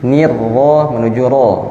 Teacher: Ini dia tipis lagi, nirro menuju ro. Nah, ro yang getarannya tidak perlu banyak-banyak, tapi cukup 2 atau 3 getaran